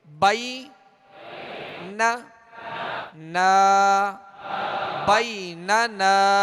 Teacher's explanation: اب آگے جو نون ہے دوسرا، اس کے ساتھ الف مدہ ہے تو ایک الف کی مقدار کھینچیں گے